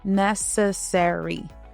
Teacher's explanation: Take the word necessary. It may look long, but it really is just 4 beats. Necessary, with the stress on the first beat.